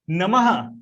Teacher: जो विसर्ग है उसको हम उच्चारित करते हैं तो हमको हल्का हल्का ह जैसे सुनाई देता है।